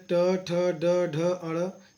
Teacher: ट, ठ, ड, ड, ण ये मूर्धा से बोले जाते हैं। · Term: ट वर्ग